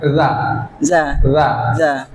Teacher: ujung lidah yang menempel ke ujung gigi seri atas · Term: dzal